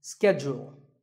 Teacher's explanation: In American English, this is schedule. The first syllable is ske and the second is jewel.